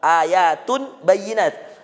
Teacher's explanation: Ayatum tum iqlab. Nun sukun ketemu ba.